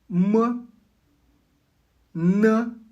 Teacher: Commençant par les nasales, leurs particularités, leurs échappes non pas par la bouche mais par le nez en vibrant. Le m est une nasale bilabiale. Les lèvres sont fermées exactement comme pour le M français de maman.